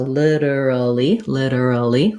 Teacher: it has the flap t and first syllable stress so literally literally four syllables um i do have a long